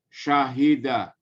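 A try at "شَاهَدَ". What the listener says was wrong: Agak panjang sedikit.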